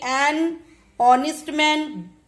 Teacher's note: Remember, we say an honest man because honest begins with the vowel sound O as in orange. So we put an before honest.